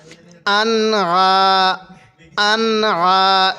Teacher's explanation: সাথে আন আইন আলিফ জবর আইনটা একটু চাপ দিয়ে পড়বো আন এই নুন সাকিনের মধ্যে গুন্না করবো না